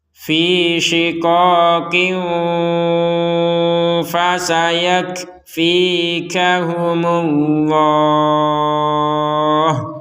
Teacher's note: Ternyata huruf fa. Maka kita membacanya dengan samar.